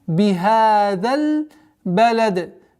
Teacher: При остановке касра аннулируется, уходит в сукун, и появляется у нас звук калкала даль.